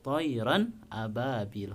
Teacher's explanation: A-nya itu adalah hamzah. Itu harus dibaca jelas, izhar jelas, tayran ababil dan tanpa dengung ya.